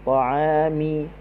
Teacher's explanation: Ta, buka mulut sedikit sahaja. Huruf ain, ta'a, berada di halqum tengah. Ta'ami, mim baris bawah mi, kita senyum.